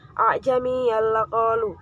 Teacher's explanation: disebut dengan bacaan idgham bilahuna sebab tanwin bertemu dengan lam